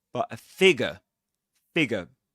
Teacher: You don't pronounce that R sound or that R letter.